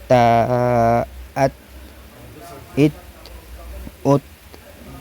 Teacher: لیکن ایک چیز یہاں پہ ذہن میں رہے، حرف تا جو ہے وہ حروف قلقلہ میں سے نہیں ہے، تو اس کی آواز مخرج میں ٹکرا کر بند ہو جائے گی، واپس نہیں ہوگی